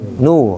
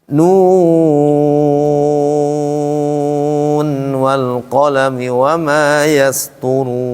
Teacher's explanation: Nu-nya panjang 6 rakaat, kemudian nun ketemu waw juga panjang lagi. Kata para ulama tidak dibaca idgham, dibacanya idhar.